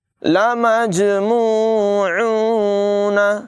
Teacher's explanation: جیم حروف قلقلہ میں سے ہے، ساکنے سے خوب ظاہر کر کے قلقلہ کر کے پڑھیں گے